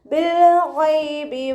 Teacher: ഗൈനിൻ്റെ മഖ്റജ് അദ്നൽ ഹൽക്ക്. ഹൽക്ക് എന്ന് പറഞ്ഞാൽ നമ്മുടെ തൊണ്ടക്കാണ് നമ്മൾ ഹൽക്ക് എന്ന് പറയുന്നത്.